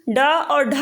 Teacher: जब हम डा और ढा बोलते हैं तो हमारी जो जीभ है वो ऊपर हमारे तालू में जाके भीतरी भाग वाली छत में सटती है, और क्या होता है नीचे आने पे वो झटके से नीचे आती है। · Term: मूर्धन्य